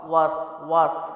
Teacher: ہونٹ گول کریں گے، را موٹا کریں گے · یہاں بھی الف جو ہے اضافی ہے، واو کے پر زبر ہے، را ساکنہ ہے، تو را ساکنہ کو واو کی زبر کے ساتھ ملا کے پڑھیں گے اور را کو موٹا پڑھا جائے گا، کیونکہ را ساکنہ سے پہلے اگر پیش اور زبر ہو تو را کو موٹا پڑھا جاتا ہے۔